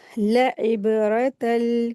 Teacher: तनवीन में जो लाम को मिला के रीडिंग करेंगे तो ये तनवीन की आवाज नून की जगह लाम में बदल जाएगी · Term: इदगाम